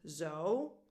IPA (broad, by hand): oʊ